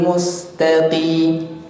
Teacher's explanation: Nah, huruf qaf ketika kasrah dia tipis. Qi. Nah, bukan ki tapi, bukan kaf biasa, tapi tetap makhrajnya di huruf qaf tapi harokat kasrah.